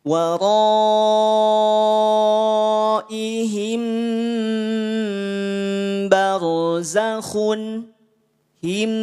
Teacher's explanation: Mim sukun bertemu dengan huruf ba, 2 harokat, ikhfa safawi.